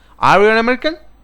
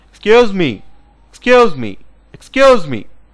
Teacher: If you observe clearly, I raise the tone, I raise my tone, I raise my pitch, I raise my voice at the end of the sentence. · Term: rising tone